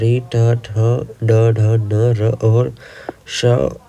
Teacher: रि ट ठ ड ढ न र और श उच्चारण स्थान मूर्धा है